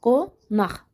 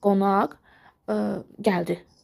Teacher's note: Yəni özündən sonra hər hansı şəkilçi və yaxud da hər hansı söz gəlmədi. O zaman sondakı q x kimi tələffüz olundu. Əgər özündən sonra samitlə başlayan şəkilçi işlənərsə, yenə də qx kimi tələffüz olunur.